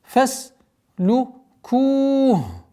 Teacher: При остановке дамма переходит в сукун. И долгота в размере 4 огласовок вот она, даммы удлиняем.